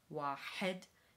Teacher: You'll note the constricted throat when making the H sound.